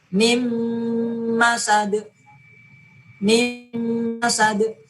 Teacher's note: Nun mati bertemu dengan mim. Maka nun matinya dileburkan ke dalam huruf mim dan ditahan sekitar 2 ketukan sebagai tanda dengung.